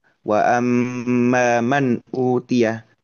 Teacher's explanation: pembacaan nun sukun itu tidak melebur dengan huruf setelahnya yaitu huruf hamzah, saling lepas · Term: izhar halqi